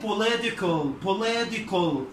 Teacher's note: قلبها flap T أو دي خفيفة كده أو light D زي ما الأمريكان بينطقوا